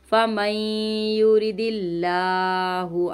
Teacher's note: اللہ کے نام سے پہلے زیر ہے، اس کو ہم باریک پڑھیں گے